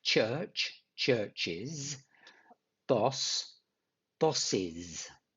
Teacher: add the sound is. And these are for words that end in the sounds ch